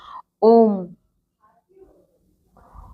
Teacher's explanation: प्लुत स्वर, जिसमें द्विमात्रा से भी अधिक समय लगता है, जैसे ओम। ओम जिसमें हमें काफी देर तक खींचना पड़ता है वर्ड, उस अक्षर को, जैसे ओम।